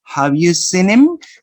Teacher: you don't pronounce the sound ha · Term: elision